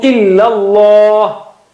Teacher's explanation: Illa, that also is flat, okay, and Allah is thick. The word Allah, the lam of word Allah is thick.